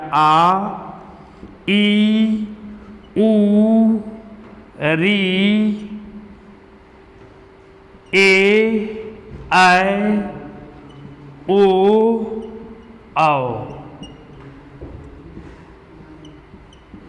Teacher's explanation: ऐसा स्वर जिसके बोलने में लघु वर्ण की अपेक्षा 2 गुना समय लगता है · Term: दीर्घ स्वर